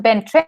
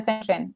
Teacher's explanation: Es que al no existir el sonido F, ocupan el sonido B. Entonces dirían Bentren en vez de Fentren.